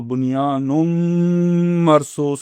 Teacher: یہاں پہ غنہ ہوگا، تو اگر آپ صحیح طرح سے پڑھیں گے تو بنیان مرصوص ہو جائے گا